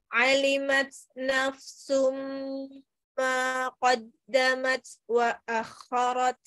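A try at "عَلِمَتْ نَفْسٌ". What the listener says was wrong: Alimat nafsum taknya, tak sukunnya dijelaskan. Alimat hamasnya dikeluarkan. Alimat. Jadi itu adanya di ujung lidah lagi. Ujung lidah bertemu dengan tempat tumbuh gigi seri atas. Alimat tati tu at. Jadi dia ada hamasnya ya. Tati tu at.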